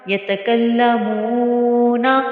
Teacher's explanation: یہاں پر واو مدہ کی وجہ سے میم واو پیش مو کو ہم نے کھینچا ہے، اس کے علاوہ کسی بھی حرکت کو ہم نے لمبا نہیں کرنا۔